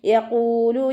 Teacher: വൗമദ് കൂടെ വന്നു 2 count നീട്ടിക്കൊടുക്കുക. · ഖാഫ് ഇസ്തിഅലാന്റെ letter ആയതുകൊണ്ട് തഫ്ഹീം ചെയ്തിട്ട് ഉച്ചരിക്കുക. ദാലിന് ശബ്ദ വന്നു 2 ഹർഫുകൾ ഉച്ചരിക്കുന്ന കനം കൊടുക്കുക.